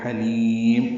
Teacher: حلیم ہا وسط حلق سے ادا کریں گے ، لی یا مدہ ہے اور میم پہ وقف کریں گے